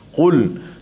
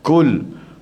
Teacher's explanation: pastikan qaf di sini tebalkan. Qul, jangan kita baca kaf.